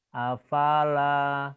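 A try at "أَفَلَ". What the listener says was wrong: Salah. Ini bukan alif. Ini lam. Lam punya tangkai.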